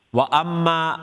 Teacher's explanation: The meme has a shadda on it, so it is ghunna, the most complete ghunna, akmal ghunna.